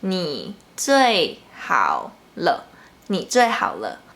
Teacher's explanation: The third tone is pronounced in a low pitch. To pronounce the third tone, you just start from a low pitch and then go down a bit.